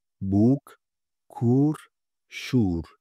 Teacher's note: şapkalı U sesi Türkçedeki U gibi okunurken biraz daha uzatılarak okunur. Örneğin buk, kur, şur ifadelerinde U sesini, uzun U sesini görebilmekteyiz.